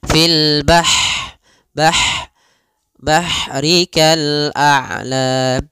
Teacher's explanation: Ha, sifat ha di sini hati-hati jangan dibaca dengan ha besar, jangan fil bahri, tapi dia ha pedas, lembut, dan juga dia punya sifat hamas, mengalirnya nafas